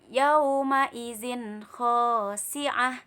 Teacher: ini ada tanwin bertemu dengan huruf kho, dibaca jelas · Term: izhar halki